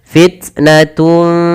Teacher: Seakan-akan terdengar bunyi eng tapi dia bukan eng karena dia menyamarkan saja pada huruf fa dan kita hukumnya dengan bacanya ikhfa.